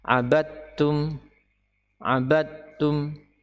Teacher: huruf dal tidak ada bekasnya sama sekali, tidak ada bekasnya sama sekali, tidak terbaca dan tidak perlu dinampakkan huruf dalnya.